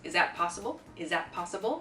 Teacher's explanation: it's like a z sound everything gets combined there